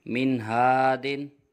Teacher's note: یہاں پر نون ساکن کے بعد حرف حلقی میں سے ہا آ رہا ہے، اس لیے یہاں پر بھی اظہار ہوگا، غنہ نہیں کیا جائے گا